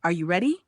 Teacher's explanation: Rising intonation. Your voice goes up at the end.